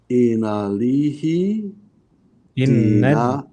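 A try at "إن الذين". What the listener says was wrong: Inna dina. So your alif and lam here is silent.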